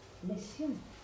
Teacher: Quello sordo, la Z sorda, è una S in genovese.